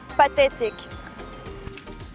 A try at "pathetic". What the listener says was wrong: Instead of f, they're saying t. Well, remember you need to keep your tongue down and relaxed.